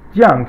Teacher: 降, fourth tone, falling tone